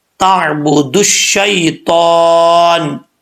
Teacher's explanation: دال کو ڈائریکٹ ہم شین سے کنیکٹ کریں گے, بیچ میں جو واو الف الف لام آ رہا ہے یہ کیا ہوگا, گر جائے گا.